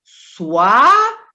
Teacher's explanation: V no sânscrito é uma semivogal. Então, ele aqui está funcionando como U